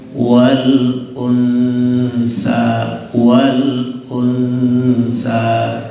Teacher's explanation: Kalau biasanya dulu sebelum kita belajar ikhfa itu di hidung, wal untha. Nah, ini ikhfanya ausat, jadi sedikit lidah kita sudah dekat ke gigi